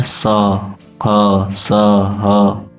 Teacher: क्योंकि इनके उच्चारण जब किया जाता है तो जो मुख से हवा निकलती है वो रगड़ खाती हुई निकलती है, और रगड़ खाने से एक प्रकार की उष्मा मुंह में उत्पन्न होती है, मतलब वो मुंह में गर्मी जैसा आभास होता है। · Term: उष्म वर्ण